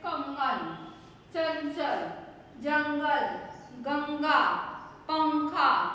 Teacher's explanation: इस प्रकार है अनुस्वार जिसम अम की मात्रा वाली बिंदी लगती इसके उच्चारण में वायु नाक से निकलती है जब हम इसको बोलते हैं तो नाक से भी बोला जाता है